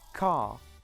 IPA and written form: kɑː (Car)